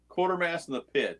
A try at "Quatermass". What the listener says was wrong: Quatermass. You guys have got something about wanting to change that word into quarter or quarter. You always call him Quartermass. It's Quater. Quater. It's Quater.